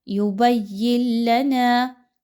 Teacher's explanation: یا کو آپ نے لام کے ساتھ ملانا ہے، درمیان میں نون کو آپ نے نہیں پڑھنا۔ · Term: ادغام